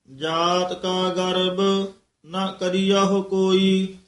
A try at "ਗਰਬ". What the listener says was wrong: ਗਰਬ ਇਹ ਬਬੇ ਨਾਲ ਬੋਲਣਾ ਭਬਾ ਨਹੀਂ ਬੋਲ ਦੇਣਾ